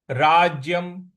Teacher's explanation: ज पर हमको थोड़ा सा बल लगाना है